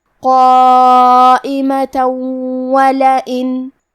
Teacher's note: یہاں حکم ہے ادغام بغنہ، تو ہم یہ حکم کو غنہ اور تشدید کے ساتھ ادا کریں گے